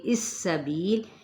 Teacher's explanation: یہاں پہ 4 حرکت کھینچیں گے ہم، اولائکا شرم، یہاں پہ ادغام مع الغنہ، یہاں پہ بھی ادغام مع الغنہ کا قاعدہ، دود پر ہے، یہاں پہ اخفاء حقیقی ہے، اور 4 حرکت کھینچتے ہوئے سین پہ سیٹی کو واضح کریں گے